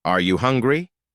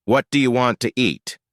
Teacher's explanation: Questions that can be answered with yes or no typically rise at the end, while information questions, using who, what, where, fall at the end. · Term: intonation